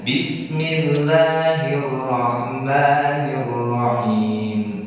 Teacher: Mad arid bis sukun boleh kita baca dua.